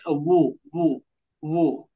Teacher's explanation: যেমন অ পেশ ও, ওয়াও পেশ ওয়াও পেশ অ উ। পেশ ও, দুই ঠোঁট কাছাকাছি রেখে বলবেন, দুই ঠোঁট গোল হবে, কাছাকাছি লাগবে